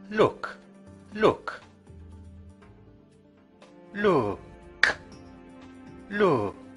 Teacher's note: You should not have felt a vibration. The k sound is unvoiced.